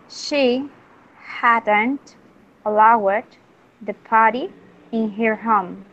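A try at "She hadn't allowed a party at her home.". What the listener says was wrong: Okay. Very good. Very good.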